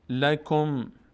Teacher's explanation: لکم کاف، دقت کنید کاف ساکنه بعدش میچسبه به میم